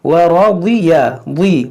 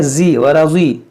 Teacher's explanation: اور یہاں پر آپ غور کریں را کو موٹا پڑھیں گے, ضاد حرف مشتعلیہ اس کو موٹا پڑھیں گے